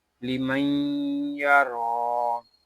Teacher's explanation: لیمن یا، را کھڑا زبر را، لیمن یا را، یہاں را کو ہم 1 الف تک کھینچ کر پڑھیں گے کیونکہ را کے اوپر کھڑا زبر ہے، یا یہاں زائد ہے اس یا کو ہم نہیں پڑھیں گے۔